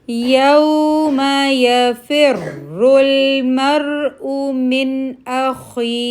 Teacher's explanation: من اس کو کھینچنا نہیں ہے، 1 کاؤنٹ